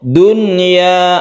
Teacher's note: kita membacanya itu sebagai Nun yang sukun biasa dan tidak berdengung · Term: izhar wajib